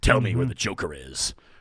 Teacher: but the batman is very breathy but it's also very authoritative